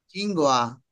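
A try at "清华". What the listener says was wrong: ছিং, ছিং, এই যে ছিটা হবে একটু বাতাস বাইর হবে। ছিংওয়া, ছিংওয়া, ছিংওয়া।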